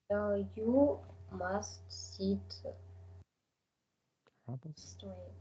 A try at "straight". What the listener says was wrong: Straight. Okay, I couldn't hear the word straight very distinctly because straight. Maybe you pronounced the word straight, but it was too silent.